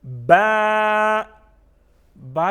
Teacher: با کی آواز میں تھوڑی سی جنبش اس لیے پیدا کرتے ہیں کیونکہ یہ حروف قلقلہ میں سے ہیں